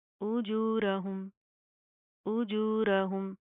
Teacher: उजूरहुम, उजूरहुम, जीम के अंदर आपने चे की साउंड पैदा करने से बचाना है, रॉ को प्रॉपर मुंह को पुर करके पढ़ेंगे, मोटा पढ़ा जाएगा।